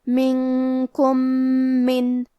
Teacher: کلمت من میم حروف الادغام میں سے ہے اور ادغام کا معنی ہے حرف کو حرف میں داخل کرنا تو ہم پہلے میم کو دوسرے میم میں ملا کے ایک ہی میم لیکن غنہ اور تشدید کے ساتھ پڑھیں گے. منکم من.